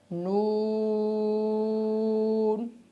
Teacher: نون کو ادا کرتے ہوئے اس چیز کا خیال کرنا ہے کہ نون کی پوری آواز ناک میں نہ جائے، بلکہ نون کی شروع میں تھوڑی سی ناک میں جاتی ہے اور آخر میں تھوڑی سی ناک میں جاتی ہے، باقی درمیان میں جتنی آواز ہم کھینچتے ہیں تو اس کی آواز ناک میں نہیں جاتی، جیسے نون۔